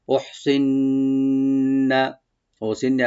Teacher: ওহসিন্না হাটাকে আমরা হামস করবো